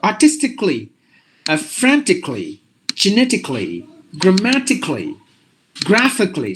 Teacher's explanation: you just have to drop the a sound for all these words